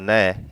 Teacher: त वर्ग का पांचवा अक्षर है न, इसका उच्चारण स्थान दंत भी है और नासिका भी है